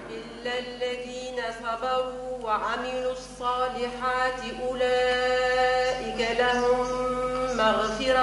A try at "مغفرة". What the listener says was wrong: لا ما قلش مغفرة، قلقة له مغفرة ساكنة سكنة.